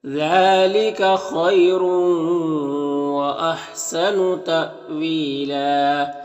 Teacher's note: یا لین سے نرم آواز کے ساتھ جلد پڑھیں گے · حمزہ ساکنہ ہے تو جھٹکا لگے گا